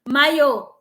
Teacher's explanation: a sílaba tônica é a última, é uma oxítona